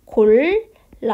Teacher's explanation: 그리고 나서 여기 봤더니 골랐다처럼 발음 나죠. 즉 앞에 있는 디귿의 영향을 받아서 뒤에 있는 디귿이 쌍디귿으로 바뀌게 됩니다. 골랐다 이렇게요. 그러면 여기서는 앞에 있는 디귿의 영향을 받아서 된소리되기가 일어난 게 되겠고요.